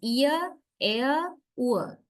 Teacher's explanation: So then these 3 are centering diphthongs. From whatever part of the tongue, the tongue is finally gliding to center.